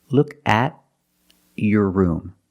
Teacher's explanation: If I separate the words, the T is a stop T because it's after a vowel.